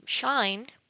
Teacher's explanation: In the case of the first sound as the first sound in the word shine there is no vibration of the vocal chords. This is why this sound is called voiceless post-alveolar fricative